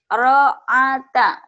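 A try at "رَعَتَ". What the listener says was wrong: Ain. Ro'ata. Makhrajnya ibu belum mantap ya. Makhrajnya ini ya.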